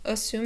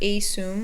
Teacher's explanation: the first syllable is a schwa